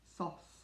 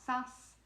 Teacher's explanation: That's a very dark A, O, very dark.